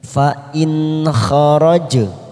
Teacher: huruf jim sukun warna biru namanya qalqalah sughra kita pantulkan